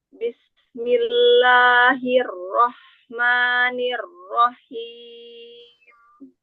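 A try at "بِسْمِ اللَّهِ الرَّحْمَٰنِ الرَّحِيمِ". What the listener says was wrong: Ya, Mbak yang kasroh jangan ke samping, turunkan rahang dan bibir bawah. Bismi.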